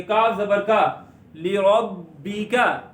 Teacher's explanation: और बा रूफे कलकला में से है जिसमें आवाज लौट कर निकलती है, ली रब बी। काफ के ऊपर जबर मुंह खोल के पढ़ेंगे, लंबा नहीं करेंगे।